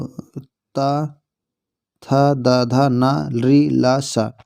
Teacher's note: दंत या दंत का उच्चारण स्थान है